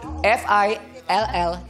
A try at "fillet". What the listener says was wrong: No, you don't say L-L. Again, you blend. L-L. L-L. The consonant and the vowel. L-L. F-I-L-L-E-T. Para malaman mo kung perfect ang pronunciation mo ng L, kailangan yung dila mo maiiwan sa labas.